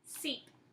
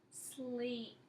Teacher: you're not pronouncing your L after the S